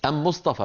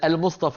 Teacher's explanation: عندهم اداه التعريف ام بدل الام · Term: طمطمانيه حمير